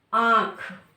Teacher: इसमें आप नाक का प्रयोग कर रहे हैं और मुह का भी प्रयोग कर रहे बोलने में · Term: अनुनासिक